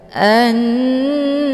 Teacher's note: Hukum bacaan ghunah musyaddadah didengungkan.